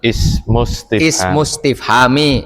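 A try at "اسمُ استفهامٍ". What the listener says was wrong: Min. Kenapa nggak ditanwin? Mus.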